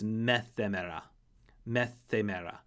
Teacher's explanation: Meta plus hemera is going to become the t plus the h sound of the rough breathing becomes theta. So met hemera becomes methemera. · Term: aspiration